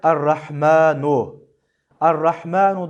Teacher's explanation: ra harfinin harekesi üstün olduğu için bismillahirrahmanirrahim errahman ve errahim'deki ra kalın okunur.